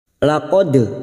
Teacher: dal sukun qalqalah sugro yang mati asli di tengah kalimat, jangan lupa dipantulkan